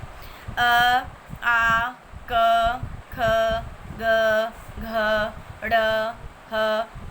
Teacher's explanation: ये इन सब का उच्चारण स्थान कंठ होता है और कंठ से उच्चारित किए गए वर्णों को कंठ्य कहा जाता है